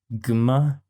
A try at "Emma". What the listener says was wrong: No, it's a silent G, stupid. It's silent. You don't have to pronounce it.